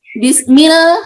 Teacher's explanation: Nah, tadi yang saya bilang, bismil ya, mil lamnya itu dibaca, dan jadi huruf lam itu boleh bisa dibaca tebal atau tafkhim, boleh juga dibaca tarkik atau tipis. Tapi untuk lam yang bertemu dengan selain lafaz Allah itu dibacanya tipis, apalagi dia kasroh.